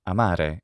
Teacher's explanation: sound but when r is singular it's not trilled in italian when it's intervocalic like this it's in fact just an alveolar tap amare it's not amare amare would be incorrect for italian but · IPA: /amare/